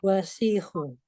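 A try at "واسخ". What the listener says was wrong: Wasihun. Wanya tidak panjang jadi wasihun.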